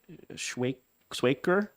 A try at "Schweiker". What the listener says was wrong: That's Schweiker. It's Germanic. It's like Schweiz and other German names. You pronounce the second letter instead of the first.